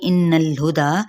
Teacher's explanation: हो गया, कुल लाम को हिलाएंगे नहीं, इन्नल हुदा यहाँ पे गुन्ना करते हुए नून की ज़बर को लाम के साथ मिलाएंगे